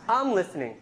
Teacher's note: And we have extra strong, contrastive or emphatic stress. Sometimes your voice goes really high.